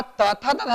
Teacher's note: उसी प्रकार तथा दधा जब पढ़ते हैं तो हमारा जीभ दांतों को स्पर्श करता है